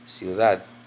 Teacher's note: Or this one ends in another letter other than a vowel in or S. I know that the stress is on the last syllable